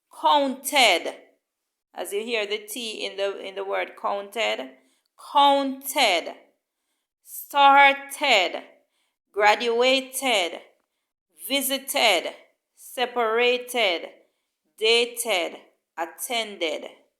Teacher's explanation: If the verb base ends in a T or D sound already, then the ed ending sound like id or ed, and it is pronounced as an extra syllable. So if the verb base ends in a T or D at the end, then the ed sound like ed or id. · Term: an ed sound